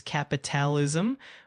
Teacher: Capitalism is said as capitalism with the emphasis on the second syllable.